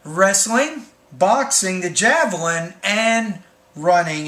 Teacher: Just don't forget when you have the items in a series, it's like wrestling, boxing, the javelin, and running, and then drop your tone on that last item.